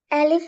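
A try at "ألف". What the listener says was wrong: அலிஃபா? அலிஃபான்னு கேட்கப்படாதான், கேள்வி கேட்க கூடாது. அலிஃப்.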